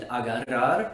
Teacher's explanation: by putting your tongue against the roof of your mouth but instead of just flapping once you hold it there and expel air from your mouth causing your tongue to trill